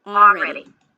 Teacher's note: >> By the way, she pronounces it with the L already. But know that you can drop the L. It's also okay already.